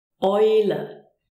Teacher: we have the combination EU, which is pronounced OI.